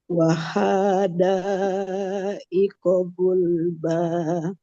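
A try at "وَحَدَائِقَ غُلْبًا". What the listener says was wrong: Haknya tidak panjang. Wahada.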